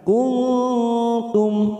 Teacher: Kuntum, ada nun sukun bertemu ta masing-masing, ikfa hakiki 3 ketuk kita samarkan. Kuntum, mim sukun bertemu sod, idhar safawi, kita baca jelas tanpa mendengung